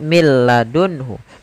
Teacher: Tidak dibaca min ladunhu, tapi langsung ke huruf lam. Karena nunnya dianggap tidak ada dan diidghamkan ke huruf lam. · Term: idgham bila gunnah